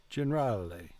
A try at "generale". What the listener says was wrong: Generale. Good.